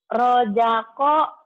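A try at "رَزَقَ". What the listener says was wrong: Roza Zai orang Sunda mah Rojako. Zai. Rojako. Roza Zaitun Zainab. Rozako Rapu. Rozako.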